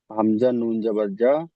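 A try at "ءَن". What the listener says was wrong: হামজা নুন জবর আন, আন। হামজার উচ্চারণটা হয়নি, জবর আন, নুন জবর না, আন না।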